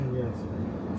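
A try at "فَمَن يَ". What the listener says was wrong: Faman, that's without idgham. But I want you to try with idgham without ghunna. Famayyas. Famayyas. That's wrong. Because there's no ghunna taking place. Famayyas. Famayyas.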